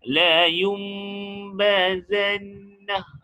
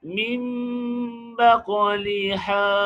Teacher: Walaupun nun sakinah bertemu dengan ba, kita lihat tadi apa penerangan tadi, kita ikhfa'kan, kan? Kita mengikhfa'kan mim dengan mengekalkan dengung pada mim.